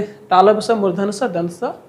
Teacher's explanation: तीनों को हम स ही बोलते हैं